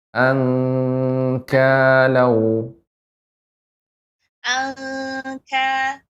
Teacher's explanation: ikhfa pada kaf, langsung pengucapannya eng. Angkalau, khusus kaf dan qaf. · jadi langsung dimasukkan ang. Ya, ang, langsung hidung.